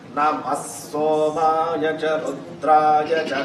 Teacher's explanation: Namaha followed by Sa becomes Is. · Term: visargam